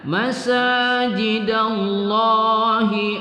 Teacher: lamul jalalah kita baca panjang satu Alif dan kita tebalkan kita tafkimkan · nun sukun bertemu ya, kita baca gunnah pada idgham ma'al gunnah ya, nun sukun bertemu ya.